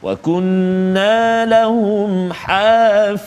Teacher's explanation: Yang kedua iaitulah pada kalimah hafizina, huruf dha tebal juga